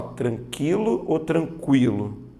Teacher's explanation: veja que a letra u é pronunciada ou seja ela é uma semivogal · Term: ditongo crescente oral